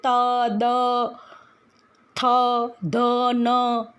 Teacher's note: દાખલા તરીકે ત, તમે જો ત બોલો છો તમારો જીભ દાંતને પાછળ સાઈડ અડે છે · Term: દંત્ય વ્યંજન